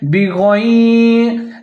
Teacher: با کے نیچے زیر ہے، غین کو آپ نے ظاہر کر کے موٹا کر کے پڑھنا ہے